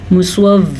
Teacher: سواد کو ہم پر پڑھیں گے کیونکہ سواد بھی قاف اور خا کی طرح حروف مستعلیہ میں سے ہیں